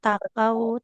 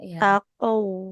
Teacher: Kalau qof itu kan tidak ka tapi qo. Jadi bukan takau tapi taqou.